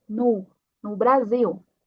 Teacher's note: Temos uma O no final, então vai ser a pronúncia como uma U